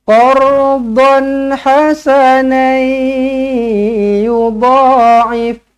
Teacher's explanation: In tuqridullaha qardan hasanai. Tanwin tak selari bertemu dengan ya, idgham ma'al gunnah, jumpa dengan huruf ya, kena senyum, dengungkan 2 harakat.